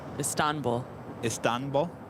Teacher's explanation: you accent the second syllable